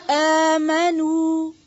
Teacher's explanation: نون غنہ کی آواز نہیں آئے گی, ٹھیک ہے. جو اردو میں ایک نون غنہ ہوتا ہے نا, کیوں میرے سے وہ والی آواز نہیں آئے گی.